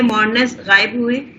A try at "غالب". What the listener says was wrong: غائب نہیں ہے، یہ غلب ہے. غلب تما ہے نا، یہ غین لام اور با، یہ مادہ ہے غالب ہونے کے لیے.